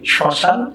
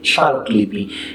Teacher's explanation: এই শব্দের শুরুতে ম ফলার কারণে এখানে একটু শাসাঘাত হয়ে থাকে